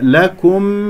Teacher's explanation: كاف مضمومة نضم الشفتين ومرققة، ميم مظهرة، لكم اسمع الميم مظهرة، لكم آياته، مد بدل، ألف ساكن قبلها مفتوح، همزة مفتوحة، هنا لدينا مصيرة صغرى، آياته، ليس آياته، لا تقل صوت الألف، هذا خطأ، آياته لعلكم تشكرون.